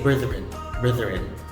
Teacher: it's voice th not the voiceless